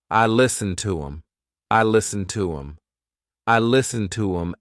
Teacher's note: the word them has the th cut out and instead you're saying um